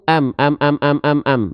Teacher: bibir atas bibir bawah nempel itulah huruf mim